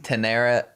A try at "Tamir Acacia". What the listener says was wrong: It was an M there, buddy. Not an N. It was Tamir Acacia. Tamir Acacia is what I'm guessing.